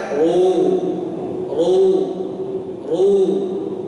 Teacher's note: Allah, ru, pangkal lidah diangkat. Ini diangkat pangkal lidahnya.